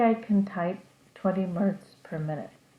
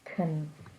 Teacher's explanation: You hear the C and you hear the N, but you don't really hear the A in the middle of the word.